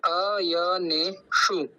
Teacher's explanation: वाला आप देख रहे होंगे श वो मुर्धन्य सकार है और उस मुर्धन्य सकार के अंदर छोटा उ का मात्रा है यानी कि हर्ष उकार है तो हम उसका ज्यादा लंबा उच्चारण नहीं करेंगे